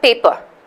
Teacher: paper stress is on the first syllable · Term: stressed syllable